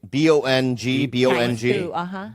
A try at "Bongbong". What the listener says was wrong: Bongbong. No. It's bongbong. You have to double it up all the time in the Philippines.